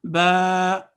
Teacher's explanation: And when they are preceded with specific fatha, kasra, and dhamma, and the rule is if a sound, that is alif, is preceded with fatha or a sound, it will prolong that a sound to 2 seconds, like in ba. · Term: Long vowels